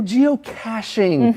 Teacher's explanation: the ch sounds like an sh